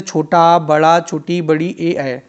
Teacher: आवृत्त मुखी स्वरों में ओष्ठ गोलाकार नहीं होते हैं।